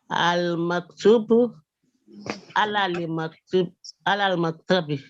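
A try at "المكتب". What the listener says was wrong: You got it now, but not 100%. Give that fatha.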